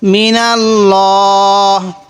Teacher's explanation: আমরা ল পড়বো যখন মিলিয়ে পড়বো তখন এভাবে পড়বো মিনাল্লাহ কারণ আল্লাহ শব্দের লামের পূর্বে যদি এরকম জবর অথবা পেশ থাকে তখন আমরা এই লামটাকে একটু মোটা করে পড়বো